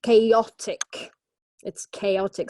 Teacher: it's three syllables and the stress falls on the second syllable